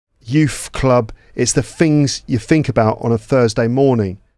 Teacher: some of those th sounds might be pronounced with a f or with a v